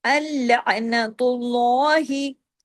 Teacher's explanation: अल्लाह के नाम में जो लाम है उसे हैवी करके पढ़ेंगे। इसको कहते हैं लाम जलाला, इसको कहते हैं लाम जलाला।